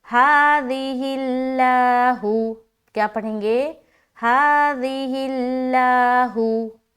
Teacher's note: अब यहाँ पर देखिए लफ्ज अल्लाह आ गया है ना, तो लफ्ज अल्लाह से पहले क्या है, जेर है, तो लफ्ज अल्लाह का लाम को हम बारीक रखेंगे, है ना, जेर की सूरत में हमें बारीक रखना है।